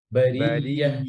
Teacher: ইয়াটা যেন শক্ত না হয়ে যায় আওয়াজ যেন বন্ধ না হয়ে যায়